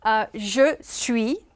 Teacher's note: the S at the end is not pronounced